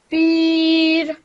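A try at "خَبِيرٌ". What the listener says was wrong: Khabir. Start with kha. So the dammatain is replaced by a sukoon. And I think she said khabiru or khabir, I don't know. But I heard khabiru, so that's why I highlighted that. So it's meant to be khabir.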